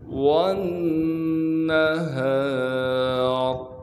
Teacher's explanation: تشدید ہونے کی وجہ سے نون میں غنہ کیا جائے گا، یعنی ناک میں آواز کو لے کر جائیں گے